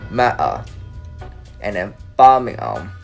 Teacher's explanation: they don't say T or H a lot. They drop it. I mean, not every of it because I do some research and not all of T and H they drop.